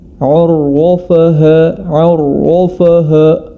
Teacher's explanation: Huruf ainnya tebal, huruf fa-nya pun ikut-ikut tebal. Ya, tetap pada kondisi istifal, atau cara mudahnya lidah kita turunkan saja di bawah.